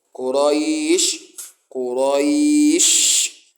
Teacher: The shin, the sound of it will be, you are going to spread that sound across the mouth. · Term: التفشي